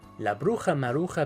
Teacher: this J sound in Spanish is sort of like an uh-huh in English but in some accents is more guttural so feel free to choose your preferred pronunciation here la bruja